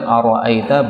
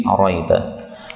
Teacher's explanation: ara'aita boleh dihilangkan hamzahnya menjadi araita